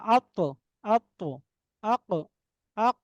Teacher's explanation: আত্ত আক দেখেন জিহ্বার গোড়া কিন্তু উপরের দিকে উঠে যাচ্ছে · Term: ইস্তিলা